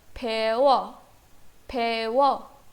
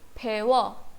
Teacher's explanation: उ और अ मर्ज हो गए व